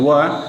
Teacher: है एक वर्ण है व जिसका उच्चारण स्थान होगा दांतो मतलब ये दो जगह से उच्चारित किया जाता है दांत से और ओठ दोनों सम्मिलित होते हैं इसके उच्चारण में